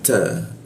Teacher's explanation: Nah, ta itu bocor tipis. Eh, ujung lidah bertemu gigi